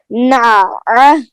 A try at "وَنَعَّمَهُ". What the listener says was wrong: ابھی بھی صاف نہیں ہوا. نا، آواز بند نہ ہو مکمل. نا.